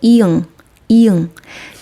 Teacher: 혀가 앞에서 뒤로 땡겨 지면서 말랑말랑한 입천장이 막히는게 느껴지나요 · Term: 비음